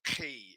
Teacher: it's guttural it's further down in the throat not up in the in the mouth